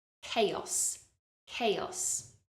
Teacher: even though we have a CH sound at the beginning we don't say chaos it's a C Sound